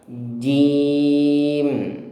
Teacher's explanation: jim itu makhrajnya di tengah lidah, menempel ke langit-langit atas